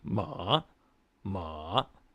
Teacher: And then the third tone, I call it the dipper tone. It kind of goes down lower than any of them, but it bounces back.